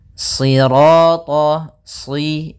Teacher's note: Sirata, si, sambil pangkal lidah kita karena shad itu pangkal lidah kita terangkat dan melekat karena dia huruf idbaq. Sira, kemudian ra-nya ra tafkhim.